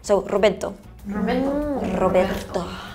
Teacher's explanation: if you say it quickly, the second R is gone